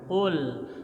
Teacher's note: Lamnya tidak mantul, mati, lepas. Jangan qul.